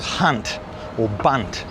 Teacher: So for Aussies, the U sound, most of the time we say ah. For example, hunt or bunt or some other words that are like that.